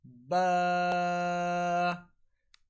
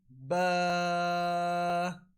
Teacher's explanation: the letter ba is pronounced from the wet portion of the lips, which is on the inside of a little bit closer to the inside of our mouth, like ba.